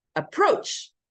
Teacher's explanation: No, it's approach. Second syllable, approach. That's where the stress should be.